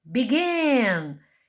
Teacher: A sílaba tônica, a sílaba forte é a última